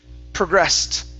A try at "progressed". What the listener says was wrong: Okay, instead of progressed, give me good R's.